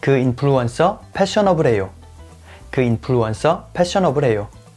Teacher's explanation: So to say that the influencer is fashionable, first get rid of the R sound at the end of the word influencer, and also change F from both influencer and fashionable to P sound